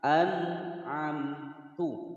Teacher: An'a ada nun sukun bertemu dengan huruf ain, yang mana huruf ain ini adalah salah satu huruf idhar, maka cara membaca nun sukunnya dibaca jelas dan tidak boleh dipantulkan